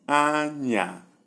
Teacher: Number 2, we have high, low